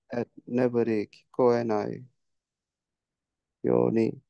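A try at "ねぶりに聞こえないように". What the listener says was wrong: Perfect. As not to be heard from neburi.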